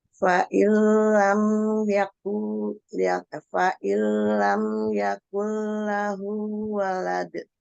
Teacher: dibaca mantul yang disebut qalqalah karena di akhir disebut qalqalah kubro